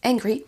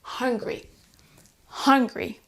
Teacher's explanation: on doit bien prononcer le H, mais ensuite, comme si c'était un E